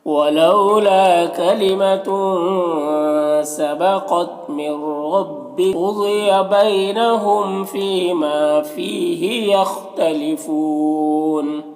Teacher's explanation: یہ سب کو ایک الف کے برابر کھینچیں گے، یہاں پر خا حروف مستعلیہ میں سے پر پڑھیں گے اور یہاں پر وقف کی صورت میں مد عارض وقفی ہوگا